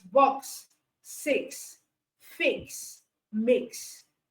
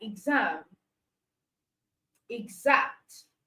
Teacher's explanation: so it can give us KS, the sound KS, and it can give us the sound GZ.